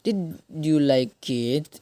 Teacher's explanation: Rising intonation, naik intonasi. Question with a yes or no answer, pertanyaan dengan jawaban ya atau tidak.